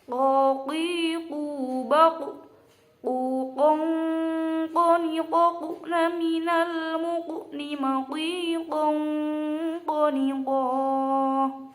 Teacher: Nah, huruf kof ini harus dibaca tebal karena juga termasuk salah satu huruf isti'la, maka harus dibaca tebal dan mencucu. Ko termasuk huruf qalqalah juga, maka ya ketika dibaca waqaf harus dipantulkan. Ko baku dan harus tetap mencucu. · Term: huruf qaf